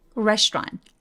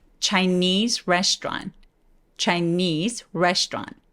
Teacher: 그래서 restaurant 해도 되긴 하는데 문장에서 빠르게 말할 때는 restaurant 해서 AU를 아예 삭제시켜버리고 STR이 연결되는 것처럼 소리를 많이 내요